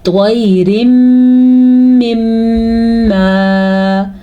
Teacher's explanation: طوا کو پر پڑھنا ہے، را کو باریک پڑھنا ہے.